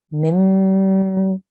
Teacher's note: we will hold on the sound for two seconds and the sound will make a nasal sound or there will be a sustained nasal sound